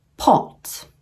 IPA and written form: pɒt (pot)